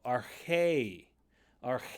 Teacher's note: it's the longest of the accents pitch up then down so ar ar so you're going up and then coming down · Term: circumflex accent